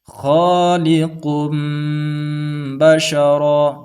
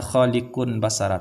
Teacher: setiap nun sukun atau tanwin bertemu dengan huruf ba dibaca berubah menjadi mim dan disertai dengan dengung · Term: iqlab